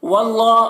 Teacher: اللہ کو پر پڑھیں گے، کھڑا زبر ہے، 1 الف کے برابر کھینچیں گے۔